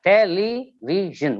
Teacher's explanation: We have 4 syllables, right? And the stress is on the penultimate syllable. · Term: penultimate syllables